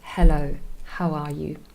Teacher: Very soft, very breathy, and not very harsh. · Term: glottal sound